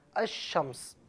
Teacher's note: الف لام موجود ہے لیکن لام کو پڑھا نہیں جا رہا